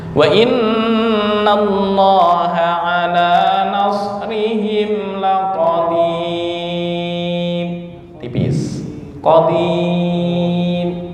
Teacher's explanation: Karena sebelum ro kan sebenarnya ada harokat ya, tapi karena wakof dihukumi sukun. Nah, karena sebelum ro berupa ya, terus sebelumnya lagi kasroh, maka ketentuannya dibaca tarkik atau tipis